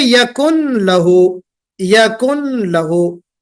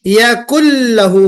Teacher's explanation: इस तरह यकुन लहू को आपने यकुल लहू पढ़ दिया है